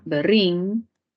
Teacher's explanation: Luego tendríamos acá berrín, separación silábica, mayor fuerza de voz en la última sílaba, nos daría una palabra aguda